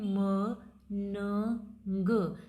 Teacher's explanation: So nasal consonants are created when you completely block air flow through your mouth. जब आपके मुंह से हवा बिल्कुल भी अंदर बाहर नहीं हो रही, नाक के रास्ते से हो रही है। Let the air pass through your nose, नाक के रास्ते से हवा पास हो रही है, तो उस टाइम पे जो जो साउंड प्रोड्यूस होती हैं वो आपकी नेज़ल साउंड्स कहलाती हैं।